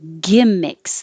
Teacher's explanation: The vowel is I, so not too high, E, but I.